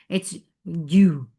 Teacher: Ju for the circle lips, and there should not be any flow of breath in jim. Otherwise, it will sound like ch.